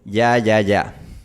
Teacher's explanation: mi lengua está elevada y está al frente para la consonante y por eso el sonido es un poquito más frontal